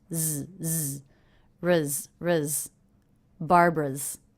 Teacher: this apostrophe s is a Z sound that's because the sound before is voiced so the apostrophe s is also voiced